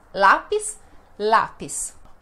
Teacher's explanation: a penúltima sílaba é a mais forte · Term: paroxítona